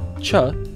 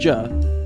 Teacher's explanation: a stop and a fricative in rapid sequence treated as a single sound